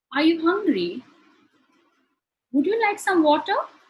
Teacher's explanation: the voice rises at the end of the sentence this you would notice when you ask questions such as yes-or-no · rising intonation, in which your voice rises at the end of the sentence.